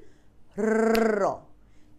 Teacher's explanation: কোন শব্দ উচ্চারণের সময় কাপে র আবারো বলছি র চানাচুর যখন তুমি এরকম করে বলতে পারবা র দেখ র যেকন তুমির নরমালি তোমার দেখবার তোমারটা কাপবে তোমার জিহবাটা দেখো এইযে খেয়াল করো জীব একাধিকবার অতি দ্রুত দন্তমূলকে আঘাত করে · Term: কম্পিত ব্যঞ্জন